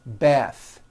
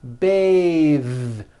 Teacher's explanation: But when you change it into a verb, to bathe, the vowel changes to an A sound and the TH is voiced. Bathe, like in bathing suit.